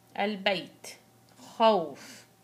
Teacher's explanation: عرفنا إيش معنات عارض، يعني هو أساسا حرف متحرك ولكن بسبب الوقف سكن. يتولد عندي مد بنسميه مد لين، نلحقه بالمد العارض للسكون 2 4 6